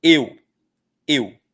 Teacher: O E é forte, o U é fraco. Véus é forte, é vogal, U fraquinho. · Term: ditongo